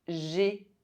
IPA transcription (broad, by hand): ʒe